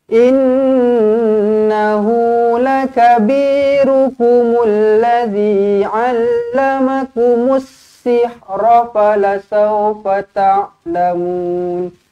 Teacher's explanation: Innahu nun sabdu wajibul gunnah. Dua harakat didengungkan.